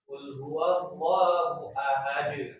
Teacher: Jadi dipenuhkan bagi huruf dal dia punya sifat qolah